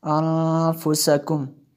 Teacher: نون جو ہے ساکن ہے، اور اس کے بعد فا حروف اخفا میں سے ہے، اس لیے یہاں پہ غنہ کیا